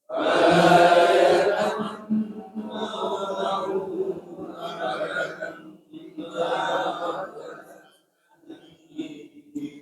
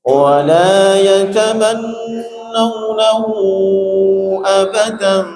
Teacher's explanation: Hunya silah tawilah. Wala yatamannawnahu, panjangnya 4 sampai 6 harakat.